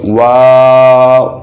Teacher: اس میں جو ممکنہ غلطی ہے وہ اس طرح آ سکتی ہے کہ ادا کرتے ہوئے واو یا واو پڑھ دیتے ہیں, تو اس کا آغاز بھی گولائی سے ہے اور اختتام بھی گولائی سے ہے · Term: ہونٹوں کی گولائی